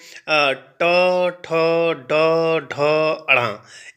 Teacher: ये मूर्धा से स्पर्श हो कर के निकलते हैं